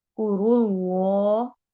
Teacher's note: कुरुल्लाह इसमें जलाला है, लाम को मोटा पढ़ेंगे चूंकि उससे पहले रॉ के ऊपर दम आ रही है।